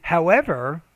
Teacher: your tone kind of rises you put emphasis on that contrast word